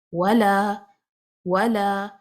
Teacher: اگر ہم ولا پہ ہی وقف کر دیں نا، آگے نہ پڑھیں تو ہم نے اس کو 2 کاؤنٹ مد اصلی پڑھنا ہے